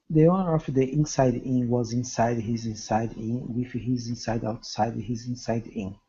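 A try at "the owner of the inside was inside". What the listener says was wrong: so fast we almost lost a little of the stress impressive though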